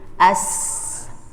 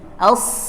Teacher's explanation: ketika dia sukun juga bunyinya tetap ada o-nya karena pangkal lidah terangkat. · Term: sad